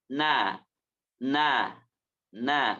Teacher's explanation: Ujung lidahnya menempel terhadap gusi atas bagian depan. Gusi atas bagian depan. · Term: Nun